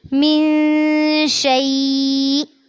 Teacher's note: وقف کریں گے تو اینڈ میں حمزہ کو ساکن کرنا ہے